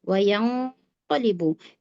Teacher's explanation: nun sukun ketemu qaf. Berikutnya qaf berarti dia tebal. Ikhfanya juga ikhfa tebal ya, ditebalkan.